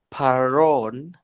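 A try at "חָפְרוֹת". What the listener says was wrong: Careful with that last letter.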